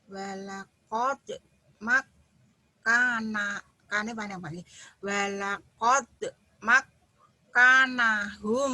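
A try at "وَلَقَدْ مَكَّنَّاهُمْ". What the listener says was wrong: Bukan, kanya pendek. Yang panjangnya yang naknya ini kan berdiri nih. Walaqad makkannahum. Walaqad makkannahum. Walaqad makkannahum. Walaqad makkannahum.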